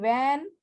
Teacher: when we pronounce ver, fur, ver, we use upper teeth and lower lip.